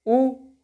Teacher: जैसे ही आप ऊ बोलेंगे तो आपके पूरे के पूरे ओंठ जो होंगे ऊपर और नीचे के मिलाकर एक वृत्त की आकृति ले लेंगे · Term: वृत्तमुखी स्वर